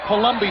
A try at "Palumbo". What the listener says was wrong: That's Palumbo. But Palumbo ends in an O,